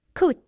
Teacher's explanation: You pronounce the T quickly using your tongue between your teeth. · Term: the T sound